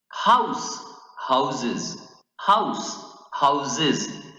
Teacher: when house become plural, it adds sound of z. Okay, it gives the sound of z, houses.